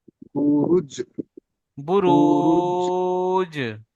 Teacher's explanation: আর একবার বলেন, জিমের যেমন উপর সাকিন এসছে। জিমের ওপরে সাকিন এসছে, জিম কলকলা হরফের 5টি অক্ষর থেকে একটি, তাই জিমকে কলকলা করে ডান দিকের অক্ষরের সাথে মিলিয়ে পড়তে হবে।